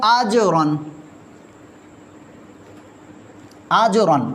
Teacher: را پر دو زبر آ گئی پر موٹا پڑھیں گے